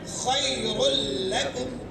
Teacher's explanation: را لام میں مل رہا ہے, ادغام ہو رہا ہے مگر ادغام تام ہے, غنہ نہیں ہو رہا ہے